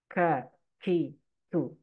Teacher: huruf tersebut itu menghembuskan nafas atau hamas ya. Nafasnya keluar.